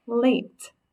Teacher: look at a word where it has that bossy silent E so the a is not going to say ah it's not lat okay in this word it says a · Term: long a sound